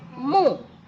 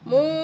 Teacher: kalau harakat domah saja pendek mu ya mu pendek tapi kalau setelah harakat tadi diikuti W sukun maka jadi panjang mu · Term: bacaan Mad